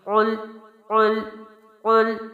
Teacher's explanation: قاف جو ہے موٹے حروف میں سے ہے جو ہم حروف ہجا میں پڑھ چکے ہیں، لام باریک حرف میں سے ہے تو ان دونوں کو ملانا ہے